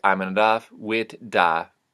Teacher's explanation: That would be voiceless TH would be turning into a T. Voiced TH would be turning into a D.